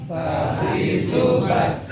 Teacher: ujung lidah bagian depan bertemu dengan gigi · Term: makhraj lidah